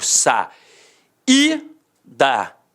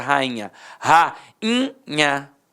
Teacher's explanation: O i ficou o quê? Nasalizado.